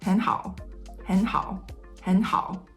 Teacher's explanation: the first tone three that turns into tone two is not a full tone two it's actually a half of a tone two